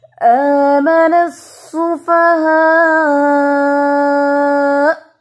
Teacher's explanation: اینڈ پہ جو حمزہ ہے سفہا کا، جب بھی حمزہ پر ہم وقف کرتے ہیں، سٹاپ کرتے ہیں اور حمزہ کو ہم ساکن کرتے ہیں تو اس کی آواز آتی ہے تھوڑی سی سختی سے